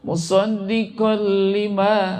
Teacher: Musaddiqal, tanwin ketemu lam, maka dibaca hukumnya adalah idgham bila gunnah, masuk tetapi tidak didengungkan.